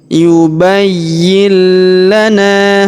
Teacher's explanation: Perhatikan berwarna abu-abu bertemu dengan huruf lam yang berharakat tasydid. Maka nun sukunnya melebur masuk ke huruf lam yang berharakat tasydid. Ya, kita tahan dan kita tekan yubayyil.